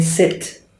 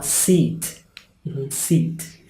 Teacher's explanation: We say sit as a verb. Sit down. It's short. However, the noun S-E-A-T, chair, seat, is longer.